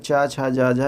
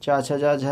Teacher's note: चा, छा, जा, झा यहाँ तालब व्यंजन के अंतर्गत आते हैं।